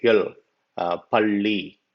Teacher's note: It has to be pronounced with the tip of the tongue curling back and touching the middle area of the roof of your mouth